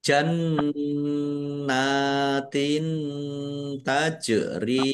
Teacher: Nun tasdid bacaan ghunah atau mendengung. Ditahan biar tampak mendengungnya. Nun fathah berdiri mad thobi'i panjang dua harakat.